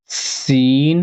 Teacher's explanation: اور چھوٹی سین کی آواز ہوتی ہے سٹی کی طرح